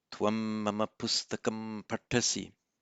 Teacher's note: anuswara followed by M, pronounced as an M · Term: full consonantal M